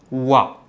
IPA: wa